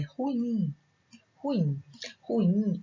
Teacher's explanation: Ruim, a sílaba tônica é a última. Então, ela é uma palavra oxítona.